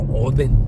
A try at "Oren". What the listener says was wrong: Oden, no, pues Oren, porque la D la mientan por R aquí.